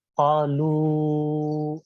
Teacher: اب اس واو کو 2 حرف کے برابر کھینچیں گے